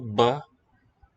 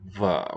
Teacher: incomplete closure instead of a ba that the spelling might suggest it's a va where there's a tiny opening left